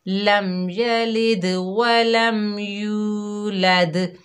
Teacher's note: دال پر کلکلا کریں گے، واو مدہ کو ادا کریں گے، ایک الف کی مقدار کھینچ کر پڑھیں گے، پھر دال پر کلکلا کریں گے